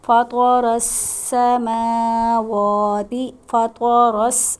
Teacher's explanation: فطر را کو موٹا پڑھیں گے کیونکہ زبر آ رہا ہے